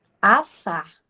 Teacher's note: nós temos 2 S, mas a gente só escuta o som de um